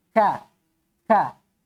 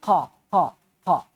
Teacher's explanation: kalau Kaf dia Hames dia berdesis